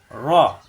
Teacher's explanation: রয় জবর আসলে আকার প্রকাশ পাবে না, রা হবে না, র মোটা হবে। রয় জবর র মোটা হবে, র জিব্বার আকার ফিট উপরে তালুতে লাগবে, র।